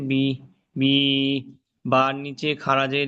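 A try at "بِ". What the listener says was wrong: জেরটি বললে হবে না, খাড়া জেরটি বলতে হবে।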